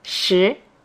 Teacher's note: 10 is shi the second tone